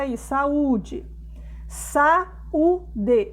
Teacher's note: eles são duas vogais também mas não ficam juntas ficam separadas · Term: hiato